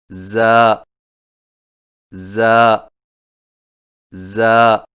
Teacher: زا کی ادائیگی میں زبان کی نوک کو سامنے والے نیچے کے دو دانتوں کے کناروں سے مضبوطی سے لگا کر باریک اور سیٹی جیسی آواز میں پڑھیں، یعنی ز ز ز۔